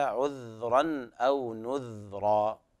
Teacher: بإسكان الذال في الموضعين